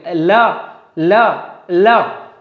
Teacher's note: पार्श्विक व्यंजन मतलब पार्श्विक ल, अगर हम बात करें ल, तो जब हम ल बोल रहे हैं तो हवा हमारे अगल बगल से बाहर निकल, ल, हवा हमारे अगल बगल से बाहर निकल रही